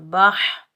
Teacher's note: बा के ऊपर ज़बर, बा को हम हा साकिन के साथ मिलाएंगे, इस हा को हम हलक के दरमियान से अदा करेंगे, बगैर खींचे पढ़ेंगे।